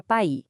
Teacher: o A e o I estão ali, juntinhos, num som só. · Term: ditongo